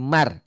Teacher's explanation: hukum nun mati atau tanwin saat berhadapan dengan ro ya. Bunyi n-nya hilang, melebur.